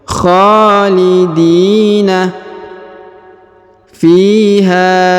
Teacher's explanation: Huruf di dipanjangkan 2 harokat karena di depannya terdapat ya sukun atau ya mati.